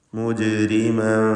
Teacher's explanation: ഈ പദത്തിൽ ജീമിൻ്റെ സുക്കൂൻ ഖൽഖല സുഗ്റ നൽകി ശബ്ദം ഹറക്കത്ത് പോലെ ചലിപ്പിക്കുക.